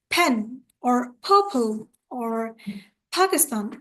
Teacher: We also learned P sound rule, that was a P sound, and it is a voiceless sound, so you will utter the puff of air